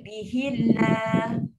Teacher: Tetap kena maintain dua harakat pada Allah tu.